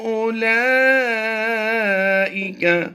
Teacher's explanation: الا یظن اولئک، اولا نہیں کریں گے، حمزہ پیش او پڑھیں گے، واو کو ہم سائلنٹ کریں گے۔